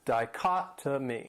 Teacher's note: This word has 4 syllables and the stress is on that second syllable. Dichotomy. And that third syllable, it has that schwa, that sound.